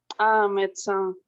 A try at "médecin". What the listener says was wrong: Exactement. Bien prononcé. Bravo.